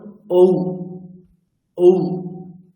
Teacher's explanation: আর ঔকারটা দেখুন ঔ ঔ, দেখুন ওষ্ঠ, ওষ্ঠের সাহায্য লাগছে, সামনে উচ্চারিত হচ্ছে পুরো।